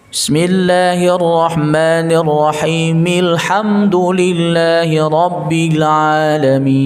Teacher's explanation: Kalau ayat kedua surah Al-Fatihah ketika diwasal maka hamzahnya tidak terbaca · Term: hamzah wasal